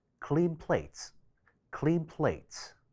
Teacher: 第一個單詞尾嘅音受到緊接嘅單詞首▁p▁呢一個雙唇音影響，兩個詞快速連讀嘅時候音會變成呢一個雙唇鼻音